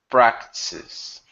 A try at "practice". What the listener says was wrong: Add that tis in there.